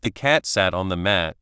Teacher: But in a sentence like the cat sat on the mat, the t at the end of cat and the s at the start of sat can join together, making it sound more like cats. The t and s sounds can join to make a ts sound.